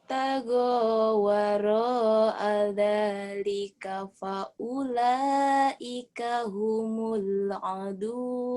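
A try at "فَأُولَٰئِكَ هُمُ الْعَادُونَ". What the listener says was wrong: Adun panjang. Kan ada yang berdiri. Ingat kalau ada yang berdiri panjang ya. Mad asli bisa mad badal, bisa mad silah qasul. Fathah berdiri, kasrah berdiri, doma terbalik.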